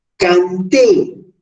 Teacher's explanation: La fuerza de entonación en la sílaba, en la última sílaba, T. Esta última sílaba termina en una vocal.